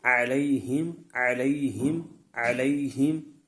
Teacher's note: حروف لین کو بغیر کھینچے بغیر جھٹکا دیے نرمی سے معروف پڑھتے ہیں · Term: یا لین